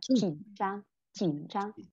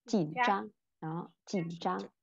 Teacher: khi mà mọi người nhìn thấy nó kết hợp với những thanh điệu khác đó, thì mình sẽ đọc thanh ba nó nhanh lên